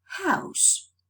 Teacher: fricative sound as in house the glottis is narrow it's and the sound is similar to that of a whispered vowel